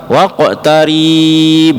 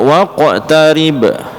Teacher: jangan rinya jangan dipanjangkan seringkali kita dengar waqotariib dari panjang kan seperti itu seolah-olah di